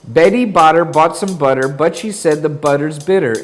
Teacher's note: the t in that tongue twister wasn't aspirated was it it sounded more like a d